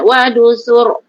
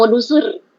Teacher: Ra sebelumnya baris depan tebal.